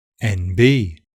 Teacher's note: The n assimilates to so when you say it quickly, you're actually more likely to say MB. Also, the stress in the abbreviation NB is normally on the second syllable, the B, NB, whereas in the word NB, it's on the first syllable, all of which adds to the sense that the word itself is very, fluid.